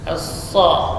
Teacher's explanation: Sini alif lam asy-syamsiyah, huruf sa, as-sa. Jadi huruf shafir ketika bertasydid maka dia bertambah jelas, ya, sa. Kemudian lam huruf tawassut baina syiddah wa rakhawah.